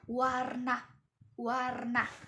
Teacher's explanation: wah ini merupakan semivokal yang bersuara